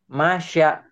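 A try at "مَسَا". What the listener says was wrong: Enggak, ini ujung lidah. Masa titiknya sama, cuman beda rumah. Dua rumahnya dua kayak ini. Yasha, ini masa. Cadel, cadel ya. Masa, masa, sa, masa. Itu sin ya. Ini masa.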